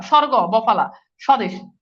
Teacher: মফালা বফালাও শব্দের শুরুতে বসলে তার উচ্চারণ হয় না